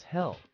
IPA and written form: heɪl (hail)